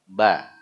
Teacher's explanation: huruf ba itu keluar dari dua bibir. Jadi bibir atas bawah terlibat.